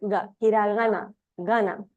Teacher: a lot of times the Japanese G sounds tend to sound a little nasal right a little bit further back in the throat it's not a gloal sound like you see in Arabic or